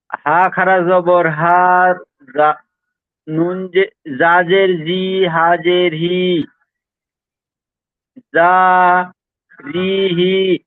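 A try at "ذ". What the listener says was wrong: দেখেন দুটো ভুল হলো, একটা এটা হলো যা নয়, এই অক্ষরটা হলো জাল।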